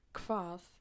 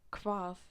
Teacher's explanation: But if H and V are together, then there comes a K sound, like hvað, it means what.